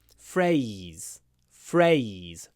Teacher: FR we could even write it like that FR and then the Z at the end is very slight